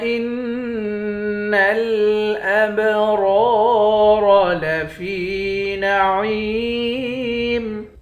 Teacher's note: فا کو یا کے ساتھ ملا کر یا کو بھی ایک الف کی مقدار کھینچیں گے · حمزے کو نون کے ساتھ ملا کر نون پر غنہ کریں گے، نون کو لام کے ساتھ ملا کر پڑھیں گے۔ ابرار، حمزے کو با کے ساتھ ملا کر با پہ قلقلہ کریں گے، با حروف قلقلہ میں سے ہے۔